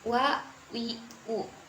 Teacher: huruf w adaikit cara yang berbeda dari dua huruf lainnya yaitu huruf wau tidak perlu sampai merapatkan antara bibir atas dan bibir bawah